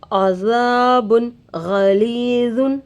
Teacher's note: تنوین کے بعد حروف حلقی میں سے غین آ کر ہے. نون کی آواز کو ظاہر کر کے بغیر غنہ کے جلد پڑھیں گے. اس کو اظہار کہتے ہیں.